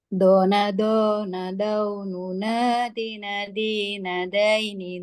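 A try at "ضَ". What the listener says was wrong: Do ini bukan da ini. Do ini duna. Jangan da Bu. Do. Do ini duna. Awas jangan da ini. Do ini.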